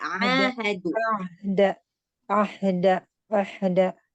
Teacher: Jadi ain dan ha dia sama-sama makhraj halqi atau makhraj tenggorokan, tapi tempatnya berbeda. Kalau ain dia di tengah tenggorokan, kalau ha dia di pangkal.